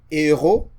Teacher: So the aspirate H, you try to pronounce it, but you don't pronounce it.